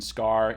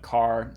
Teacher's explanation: So we got the same sort of pattern as this pattern up here for the T, and we get the same sort of pattern as well for a K. So after an S, like in scar, it's unaspirated, but just by itself at the beginning of a word like car, it's aspirated.